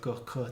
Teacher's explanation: technically, the primary point of articulation is the velum. Whereas for that L sound, the primary point was at the tip of your tongue against your teeth. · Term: velar consonant